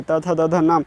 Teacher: दंतव्य उसको बोलते हैं जो दांत से बोला जाता है, मतलब दांत टच होता है जीभ के साथ, मतलब वो होता है त से, त थ द ध न।